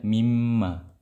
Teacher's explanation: Ya, wa ju'il tsani huwal musyaddad, dan jadilah huruf yang kedua itu ada syaddanya, ada menjadi huruf yang bertasydid ya, dan dibaca dengan gunnah juga ya, diidghamkan plus digunnahkan. Mimma, aslinya minma, dibaca mimma. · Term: idgham bi gunnah